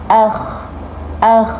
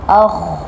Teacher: Kalau dibaca dengan nipis tadi, akh akh bibir kita seakan nak senyum. Sepatutnya nak sebut huruf kha yang tebal ni mulut kita masam. Akh tapi tidak sampai muncung.